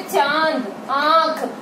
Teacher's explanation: अनुनासिक मतलब ऐसे वर्ण जिनको बोलते समय मुख और नाक से हवा निकलती है